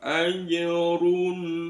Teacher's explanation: cukup di tempatnya jim dilepas itu ada pantulan kecil namanya qalqalah